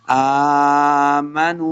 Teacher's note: حمزہ کے اوپر کھڑی زبر ہے، اس کو 2 حرکات لمبا کریں گے